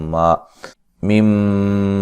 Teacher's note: मीम मुशद्दद पे गुन्ना ज़रूरी है